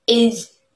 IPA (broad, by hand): ɪz